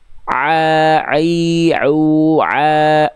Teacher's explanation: huruf ain itu ketika dilafalkan kan dia dari tengah tenggorokan